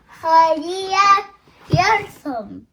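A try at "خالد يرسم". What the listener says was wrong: هذا خالد أم خالي؟ هذا خالد.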